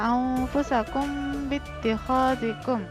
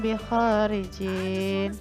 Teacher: Jadi mim bertemu dengan huruf ba, mim sukun bertemu dengan ba, maka itu disebut sebagai ikhfa syafawi dan cara membacanya didengungkan sedikit